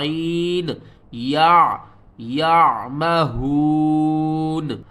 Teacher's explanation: عین جو ہے یہ حروف حلقی میں سے ہے اور عین حلق کے درمیان والے حصے سے ادا ہوگا